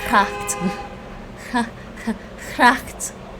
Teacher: the Dutch G is the same as the CH, except you have to have the voicing, so your throat should be vibrating